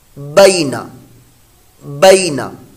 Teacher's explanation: ٹھیک ہے, با یا زبر بئی, یہ یا ساکن سے پہلے زبر تو یا لین, نون زبر نا حرکت ہے, اس کو بھی لمبا نہیں کرنا, یعنی دونوں کو لمبا نہیں کرنا کیونکہ ایک یا لین ہے